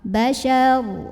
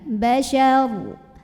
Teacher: Karena kalau ro sukun kita harus lihat huruf sebelumnya ya. Karena huruf sebelumnya fathah di shin, maka ro-nya tebal. Bashar, pangkal lidah dinaikkan.